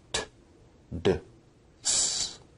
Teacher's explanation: Alveolar sounds are produced with the tongue at or near the ridge, right behind the upper front teeth, such as t, d, s.